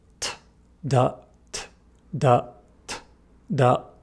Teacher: For T and D, everything is in the same place. Our tongue, our lips, our jaw, etc. We simply engage our vocal cords to create a D.